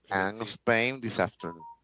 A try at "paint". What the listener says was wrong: Paint. Yeah, because if we say pain, pain is dolor.